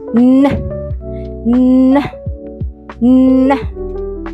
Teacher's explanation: Alveolar means your tongue touch the ridge just behind your upper teeth. So when you say n, your tongue will block the air in your mouth and the sound will go out through your nose. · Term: voice alveolar nasal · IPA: /n/